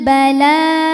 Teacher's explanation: Ala rasulinal bala, la hukumnya mad tabi'i muqaddar, sebab lam berharokat fathah berdiri, maka lam panjang 2 harokat